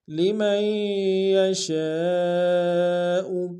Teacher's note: ذالک لمن یشاء لمن میں میم کو یا کے ساتھ ملائیں گے، یا کے اوپر تشدید زور دیں گے اور شین کی سالف مدہ الف مدہ کے اوپر مد متصل ہے، کم سے کم 3 انتظار میں کھینچیں